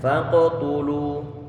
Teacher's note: Kita berikan qalqalah pada huruf qafnya.